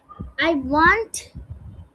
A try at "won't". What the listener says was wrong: ওয়ান্ট না, এটা ওন্ট। ওন্ট।